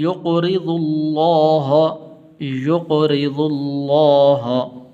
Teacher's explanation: را کے نیچے زیر ہے اس لیے باریک کر کے پڑھنے